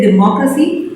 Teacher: mo is stressed all the other syllables may be unstressed